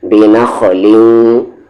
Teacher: غنہ ہوگا کیونکہ تنوین کے بعد واو آ رہا ہے